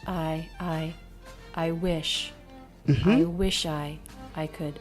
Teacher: So I is lower in vocal energy, lower in pitch.